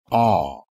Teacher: the vowel sound ah is an open back unrounded vowel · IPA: /ɑ/